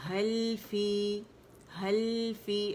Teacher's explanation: حل فی 1 کاؤنٹ کے لیے آواز جائے گی